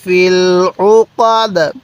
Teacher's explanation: আইনটা পড়ার সময় গলার মধ্যে চাপ দিলে আইনটা সহি উচ্চারণ হয়